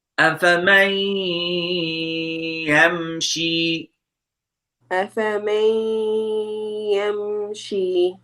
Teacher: Ya is one of the idgham letters. You need to merge the noon into ya. Idgham means merging.